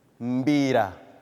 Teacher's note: It does not come with a vowel before the M. In the same way you say the word music, it's the same way you begin the word mbira.